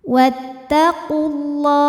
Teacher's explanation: sukun di mana sukun pertama adalah wau sukun kedua adalah lam sukun bertemu sukun tidak bisa dibaca sehingga sukun pertama dilepaskan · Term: takhalus Bil hadfi